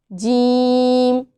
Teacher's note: वस्ते ज़ुबान और बिलमुकाबिल ऊपर का तालु, इससे हरफ जीम अदा होगा